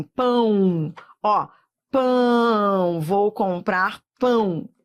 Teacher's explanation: Isso aqui é um ditongo que vai da vogal para a semivogal. Semivogal é sempre som de I ou de U.